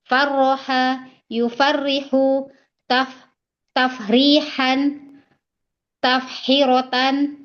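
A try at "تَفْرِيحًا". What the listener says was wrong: taf kebalik. Tafrihatan. Kebalik. Tafrohan.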